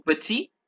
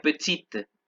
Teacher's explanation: Petit, no se pronuncia la T, petite, se pronuncia la T